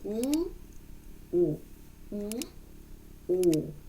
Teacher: 당연히 원순이 때문에 입술이 동그랗게 모여요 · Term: 원순 모음